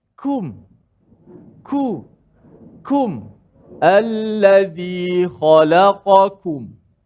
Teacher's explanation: Kum kena sebut dengan nipis dan ada angin sikit. Ada sifat hamas.